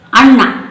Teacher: ನ ದಂತ್ಯ ಡೆಂಟಲ್ ನಮ್ಮ ನಾಲಿಗೆ ಹಲ್ಲನ್ನು ಮುಟ್ಟುತ್ತೆ